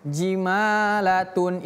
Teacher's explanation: Ini huruf jim biasa mudah dalam bahasa Indonesia je jimalatun. Nah, tun di sini dia tanwin un tapi setelahnya bertemu dengan huruf shad. Maka tun ini juga berubah hukumnya menjadi ikhfa. Tanwin bertemu dengan shad, maka dia juga termasuk ikhfa.